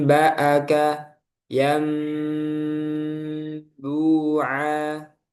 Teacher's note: Dengan merapatkan kedua bibir ketika hukum iqlab ya. Am nah, itu dirapatkan saja, nggak perlu dikasih celah. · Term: idbab syafatain